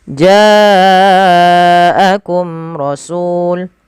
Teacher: Pada lafal ja wajib dipanjangkan 4 harakat atau 5 harakat karena ia mad wajib muttasil, ditandai adanya hamzah yang datang setelah bacaan mad tabi'i atau setelah huruf mad.